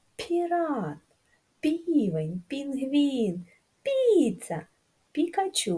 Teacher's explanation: в ціх словах звучить м'яко звук п